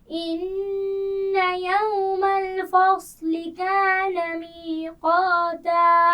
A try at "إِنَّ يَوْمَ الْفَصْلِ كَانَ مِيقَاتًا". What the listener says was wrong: یوم الفصل، لین کو ٹھیک طرح ادا کیجیے. یوم الفصل، پھر پڑھیے.